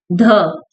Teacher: ध हमारा चौथे नंबर का वर्ण है जो दंत्य भी है, वर्तस्य भी है और महाप्राण घोष व्यंजन भी है। घोष मतलब सघोष।